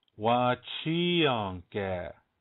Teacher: Accent on the second syllable.